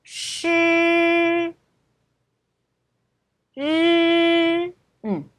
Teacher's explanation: 혀를 약간 마셔야 돼요. 근데 영어의 R처럼 완전 뒤로 말리지는 않고요. 혀가 입천장에 약간 양쪽 끝이 고정이 되셔야 돼요. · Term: 건설음